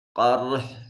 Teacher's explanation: قاف صفت استعلاء ہونے کی وجہ سے مفخم ادا ہوگا، را ساکن اور ما قبل مفتوح ہونے کی وجہ سے مفخم ادا ہوگا